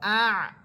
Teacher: ইন্না, হামসা আইন জবর আ, হামসা আইনকে ধরবে এবং আইনের মাখরাজ হচ্ছে কণ্ঠনালীর মধ্যখান